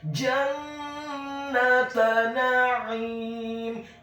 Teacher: Huruf nun-nya ditasydidkan dengan gunnah atau dengung seperti mat atau panjang 2 harokat.